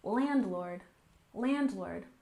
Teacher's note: landlord with a stress on the first syllable, landlord, landlord.